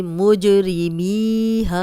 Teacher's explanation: मी या मद्दा है, जज़म वाली या पीछे मीम पे ज़ेर, 2 हरकत लंबा करेंगे।